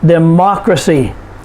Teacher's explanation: We put the stress on the third to the last syllable, which is ma